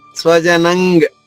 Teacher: స్వజనం నా తర్వాత ఉన్న అనుస్వర ఉచ్చారణ ఇక్కడ అంగ